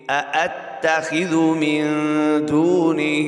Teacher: یہاں پہ غنہ کر رہے ہیں، اخفا ہو رہا ہے، کیوں؟ اس لیے نون ساکن کے بعد حروف اقامے سے دال آ رہی ہے۔